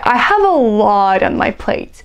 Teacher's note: A lot is emphasized.